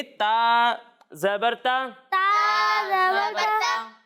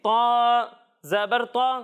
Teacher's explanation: جب ہم تا کی ادائیگی کریں گے تو اسے باریک پڑھیں گے، اور جب ہم تو کی ادائیگی کریں گے تو اسے موٹا کر کے پڑھیں گے، ٹھیک ہے؟ جی یعنی اسے پڑھیں گے تا زبر تا، تا زبر تا، اور اسے پڑھیں گے تو زبر تو۔